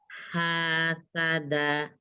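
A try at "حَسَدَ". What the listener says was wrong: Hasada, jangan terlalu panjang mi.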